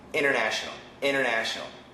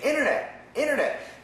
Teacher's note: The N cancels the T.